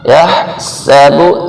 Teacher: سین سیٹی والا حرف ہے، اور با کو جلدی سے پڑھنا ہے، کھینچنا نہیں ہے۔